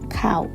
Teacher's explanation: ada gabungan antara vokal a dan juga u